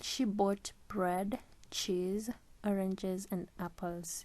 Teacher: we already know that the last item has a falling intonation and the rest have a rising intonation